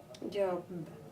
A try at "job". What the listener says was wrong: Because you want to say a P.